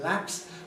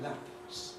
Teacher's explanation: they're also unaspirated when followed by a fricative in lapse